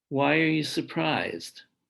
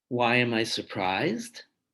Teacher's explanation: why are you surprised falling versus why am i surprised rising you'll notice also that the second one has an extra meaning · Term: final intonation